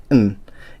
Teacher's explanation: There's no vowel sound attached to it, and I think it's the only letter or kana in Japanese that actually doesn't have any vowel sound. It's just the consonant n, and it usually ends. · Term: just an n sound